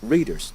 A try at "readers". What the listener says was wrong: It's readers. There's no D.